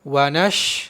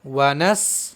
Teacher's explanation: शीन जबान का बीज ऊपर के तालू से मिलकर अदा होता है।